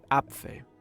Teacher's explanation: Germans pronounce vowels very strongly, especially when they appear at the beginning of a word. This causes the vocal cords to open suddenly and all the air that has built up to escape at once. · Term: glottal stops